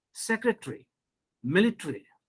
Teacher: you have one interesting phenomenon where you know a gets silent as in secretary a after t or a between t and r this a gets silent